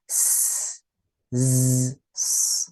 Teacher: as-safir yaitu sifat yang menggambarkan bunyi huruf seperti suara binatang, seperti suara burung gitu ya